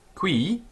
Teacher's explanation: the I on qui is a long I, and it has a circumflex accent, so it's slightly up, down. It's a winding tone, the Greeks called it.